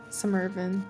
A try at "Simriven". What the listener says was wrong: It's, the R is before the Y, so I figured it would have been like Simriven. Okay, we'll say Simriven.